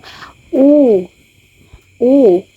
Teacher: ang mataas na sa likod na bahagi ng dila. Ito ay ang u.